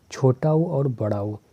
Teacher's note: ऊ बोलने के लिए होठों को गोल करना पड़ता है